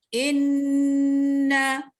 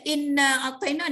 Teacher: Sepatutnya kita kena baca inna. In tu dia sampai ke rongga khayshum. Jangan ujung lidah aja. Kalau kita baca inna a'taina, dia tak sampai ke rongga khayshum. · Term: gunnah